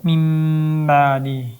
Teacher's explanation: Ya'ni nunni mimga alishtirib o'qigan degani. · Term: Iqlob